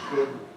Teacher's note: Here we've got a D sound. We make the D in the usual way, tongue tip up to alveolar ridge.